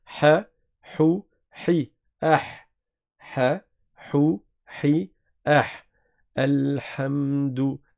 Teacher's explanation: Il faut bien sortir du milieu de la gorge la lettre H et cela nécessite de l'entraînement. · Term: la lettre ha